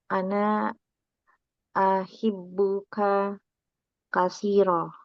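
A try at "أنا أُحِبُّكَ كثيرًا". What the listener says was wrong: Ana uhibbuka. Tadi aha ya.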